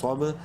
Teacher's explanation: صاد با زبر صوب، منہ بھر کے پڑھیں گے صاد کو، با حروف قلقلہ میں سے ہے اور ساکن ہے، قلقلہ کریں گے